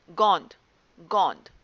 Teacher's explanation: ओ में अनुनासिक की ध्वनि स्पष्ट सुनाई दे रही है, यानी कि बिल्कुल क्लियर हमारे सामने है, लेकिन उसके उपरांत भी हमने अनुनासिक के स्थान पर अनुस्वार का प्रयोग किया हुआ है।